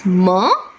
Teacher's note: that is the air passage of air doesn't go out from the mouth but from the nose